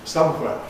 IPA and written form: ˈsʌmhweə (somewhere)